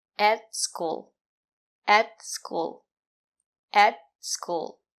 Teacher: At the sound is more closed. And the letter t is a stop t. Put your tongue up and stop the air.